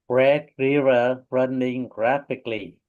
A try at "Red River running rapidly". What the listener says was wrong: Nice.